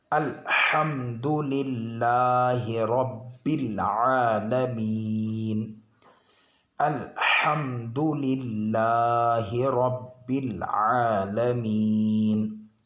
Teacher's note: میم ساکن کے بعد دال ہے، یہ اظہار شفوی کا قاعدہ ہے۔ یہاں پر میم ساکن کو ظاہر کر کے پڑھنا چاہیے، بلا غننے کے جلد پڑھیں گے۔